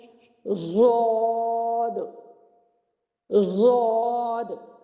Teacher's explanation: حافہ لسان جو ہے وہ دائیں بائیں میری لگتی ہے اوپر کی 5 داڑوں کے ساتھ۔ اس کا مخرج سمجھ آ گیا ہے کہ زبان کا حافہ یعنی حافہ لسان جب دائیں یا بائیں جانب یا دونوں جانب بیک وقت اوپر کی 5 داڑوں کی جڑوں سے لگے تو ضاد ادا ہوتا ہے۔